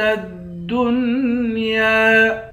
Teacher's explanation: یا کے اوپر کھڑا زبر ہے، اس کو بھی ایک الف کی مقدار کھینچ کر پڑھیں گے۔ تا کو دال کے ساتھ ملا کر دال کو سختی کے ساتھ جمع کر پڑھیں گے۔ یا کے بعد الف ہے، یہاں پر الف کو ایک الف کی مقدار کھینچ کر پڑھیں گے۔